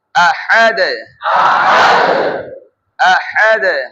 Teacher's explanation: প্রথমটা উচ্চারণ আ, গলার প্রথম স্তর থেকে, তারপরে হা উচ্চারণ করব, এটা হবে গলার মধ্য স্তর থেকে। হ্যাঁ, এই যে আহাদ আহাদ, আবার আবার হা তুলে হাদ, বাতাস বের করে আমরা পড়েছি হা উচ্চারণে, আহাদ আহাদ।